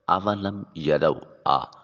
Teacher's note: حمزہ کو جوف دہن منہ کے خالی حصے سے ادا کریں گے، آواز کو حلق میں نہیں لے جائیں گے۔ واؤ کی ادائیگی کے وقت ہونٹوں کو گول کیا جائے گا۔